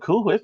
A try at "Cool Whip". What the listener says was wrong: Why are you putting so much emphasis on the H?